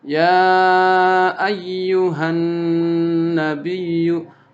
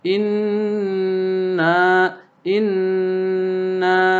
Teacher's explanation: han nun harokatnya bertasydid. Nah, itu gunnah musyaddadah, ditahan. Han nabiyyu sama dengan inna inna.